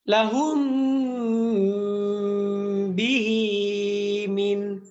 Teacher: এখানে মিমটা এক আলিফ পরিমাণ গুণনা করে পড়তে হবে। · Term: ইদগামে মিসলাইনে সগীর